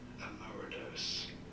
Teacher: You do want to stress on the second syllable. Emeritus in American English, however, it is generally said as emeritus.